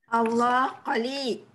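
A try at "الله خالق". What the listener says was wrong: Tak cukup panjang.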